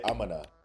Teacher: I'm gonna which is just using the schwah sound for all the vowels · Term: schwa sound